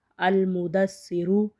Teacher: را پیش رو، المدسرو۔ را کو ہم پر پڑھیں گے پیش کی وجہ سے، المدسرو۔ جب ہم کسی حرف کو پر پڑھنا ہوتا ہے تو ہم اپنے ہونٹ گول کریں گے تو وہ حرف پر پڑھا جائے گا۔